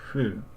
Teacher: H before U or U sound is always pronounced something more like an F, so like fu, something like that.